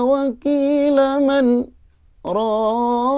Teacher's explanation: Itu di situ ada saktah ya. Jadi berhenti sejenak tanpa mengambil nafas